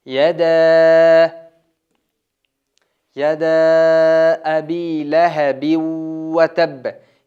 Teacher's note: Yadaa deganda mana shu to'lqin turadi. Buni to'rt besh harakat cho'zamiz.